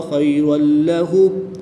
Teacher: 2 زبر کی تنوین کے بعد لام حروف معلوم میں سے ہے تو یہاں پر ادغام بلا غنہ ہوگا یعنی کہ بغیر غنہ کے ادغام کریں گے